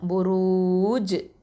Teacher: அந்த ஜீம் சுக்குனை மாற்றுறதுனால அங்கே கல்கலா குப்ரா கொடுக்கணும்